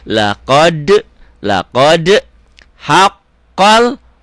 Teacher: haqqol dobel dan nyambar ke sini laqod ini nyambar ke sini laqod ada e-nya karena qolqolah karena huruf-huruf mantul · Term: qalqalah